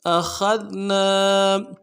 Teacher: ذال کے ساتھ ملانا ہے، ذال کو باریک ادا کرنا ہے۔ نون کے ساتھ الف مدہ ہے، ایک الف دال میں کھینچیں گے